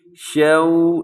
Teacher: اس پہ آپ نے ہونٹ گول کرنے ہیں، واولین ہے